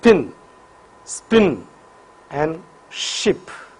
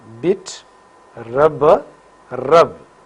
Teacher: So, p is voiceless bilabial plosive while b is voiced bilabial plosive.